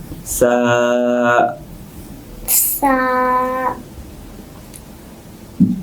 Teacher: সা আলিফ হামজা। উচ্চারণটা হবে জিহ্বার অগ্রভাগ থেকে, কিন্তু যখন সায়ের উচ্চারণটা আমাদের মুখ থেকে বের হবে তখন সামনের দুই দাঁতটা আমরা হালকা একটু ফাঁকা করব।